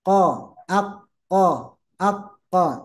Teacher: jadi sekali lagi tempatnya huruf q itu dipangkal lidah